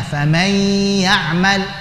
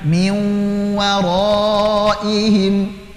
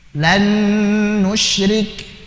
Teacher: maka dibaca idgham bi gunnah, melebur disertai dengan gunnah yang dipanjangkan